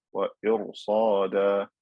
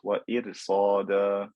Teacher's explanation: So in the word irsada, I have a ra with sukoon. There is a kasra before it, but there is a fat letter right after it, one of the letters of isti'la. So this ra is going to be fat. Wa irsada, not wa irsada.